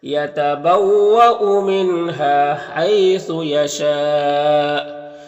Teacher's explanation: ہا میں الف مدہ ہے، ایک الف کے برابر کھینچیں گے۔ ہائی میں یا لین سے نرم آواز کے ساتھ جلد پڑھیں گے